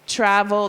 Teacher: so the first syllable is accented.